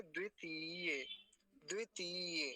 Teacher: अब इसको तीय लंबा खींचेंगे थोड़ा सा